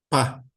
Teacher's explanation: a gente tem o pá, boca fechada, abre e com explosão produz um p. A outra letra é um p, é um pá com uma aspiração. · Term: letras labiais